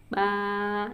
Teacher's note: Nah, tapi karena dia ada alif setelahnya dan jadi panjang, jadi mad ya, maka ba. Nah, a-nya itu tidak menyentuh bagian manapun, dia dari rongga mulut, dari tenggorokan sampai ke luar tuh ya nggak ada bagian mulut yang bersentuh dan bertemu.